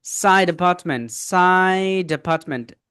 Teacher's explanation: এখানে আছে আ। So ড sound and আ sound they combine together. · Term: কানেক্টেড স্পিচ